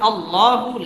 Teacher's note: লাম খারা জবর ল এক আলিফ টেনে পড়তে হবে